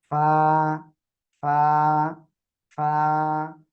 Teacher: নিচের ঠোঁটের পেট উপরের দুই দাঁতের আগার সঙ্গে লাগাবেন, এই যে, ঠিক আছে? লাগিয়ে আপনি কি করবেন, হালকা বাতাস বের করবেন। ওকে, আপনি সামনে এরকম হাত লাগান, হাত দেন, দিয়ে দেখেন বাতাস বের হচ্ছে কিনা।